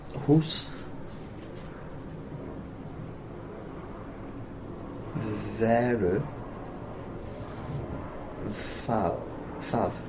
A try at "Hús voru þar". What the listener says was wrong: Not thað, which means it. Thar. And you said veru, but it's voru. Hús voru þar.